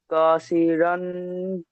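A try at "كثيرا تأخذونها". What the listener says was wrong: রন টান নেই। কাসিরন তা। হা টান দেবেন, তারপরটা বলেন।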